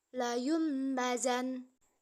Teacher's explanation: bibir di atas dan bibir di bawah tersebut posisinya akan tertutup dan juga diiringi dengan suara dengung kurang lebih 2 harokat · Iklab artinya menukar atau merubah. Maksudnya nun sukun atau tanwin yang bertemu dengan ba maka berubah menjadi mim dan disertai dengan gunnah. Panjang bacaan iklab adalah satu alif atau 2 harokat.